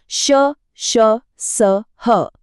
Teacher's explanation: दूसरी तरफ है ऊष्म व्यंजन, श, श, स, ह। इनको बोलते समय मुंह से हवा एक घर्षण के साथ, एक गर्मी के साथ बाहर निकलती है।